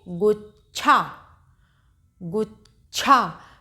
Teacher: छा में आ की मात्रा लगी हुई है और इसको कैसे बोलेंगे, गुच्छा, गुच्छा। तो इसमें हल्की सी चा की साउंड है और छा की पूरी साउंड है, क्योंकि चा आधा लगा है और छा पूरा लगा है। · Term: संयुक्ताक्षर